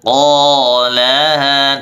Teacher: qaf, pangkal lidah dinaikkan di tempat langit-langit yang lunak. Qalaha, dan dibaca 2 harokat.